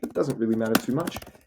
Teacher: And then he finishes on rising pitch